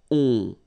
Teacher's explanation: So you don't hear any N, so it's really on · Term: nasal